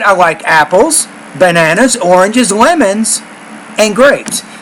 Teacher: So in items in a series, the tone rises on apples, bananas, oranges, lemons, and then it drops with grapes because you're done